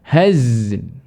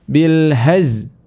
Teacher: Jadi ada kadang-kadang yang menghilangkan lam ketika di akhir kata.